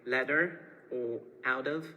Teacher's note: pronounce the letter T using a voice t as in standard American